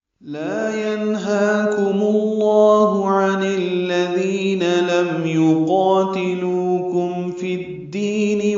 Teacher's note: لا الف مدہ ہے، دو حرکات لمبا کریں گے. ینہاکم میں نون ساکن کے بعد ہا آنے کی وجہ سے نون ساکن پہ اظہار حلقی ہے، واضح کر کے ظاہر کر کے پڑھیں گے، قلقلہ نہ ہو.